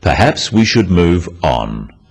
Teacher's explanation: This falling intonation makes it a more definite statement rather than a suggestion. · The first one, perhaps we should move on, is phrased as a suggestion, but it is said in a firm way with a falling intonation at the end.